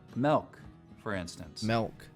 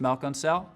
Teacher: over here right there's something interesting and some Utah accents though some front vowels get lowered before L sounds